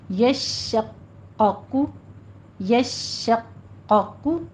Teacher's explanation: قوف کے اوپر ضمہ ہے، اس کے اوپر ہونٹ گول کر لیجئے